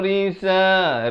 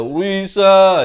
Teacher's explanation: Jangan baca risa, itu jadi tebal. Ra di sini baris bawah jadi nipis